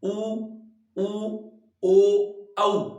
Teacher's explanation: होठों का आकार लगभग गोल सा हो जाता है वो वृत्ताकार या वृत्त मुखी है वो माने जाते हैं